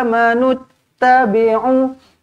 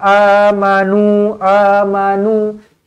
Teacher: NU ni dah tak perlu panjang lagilah